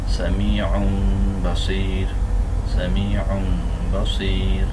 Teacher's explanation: এখানে অন না হয় অম হয়েছে, আর মিন না হয় মিম হয়েছে, এবং গুণা হয়েছে